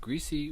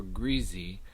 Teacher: is it greasy with a voiceless S or greasy with a voiced Z? This one is another one that patterns in terms of a north-south difference, and the greasy with the Z voiced form is more common across the South and the South Midland.